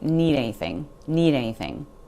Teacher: That D sound really disappears. Sounds more like need anything.